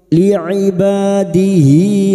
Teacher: tidak bertemu hamzah namanya mad silah khasirah dua harakat kita panjangkan